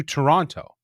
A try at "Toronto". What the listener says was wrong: Yeah, hit that T too hard. Toronto. No, you got to drop the second T.